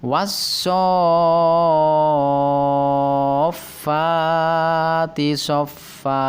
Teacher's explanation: Shotnya dibaca panjang 6 harokat karena ada alif atau huruf mat yang bertemu dengan huruf fa yang bertasdid dalam satu kata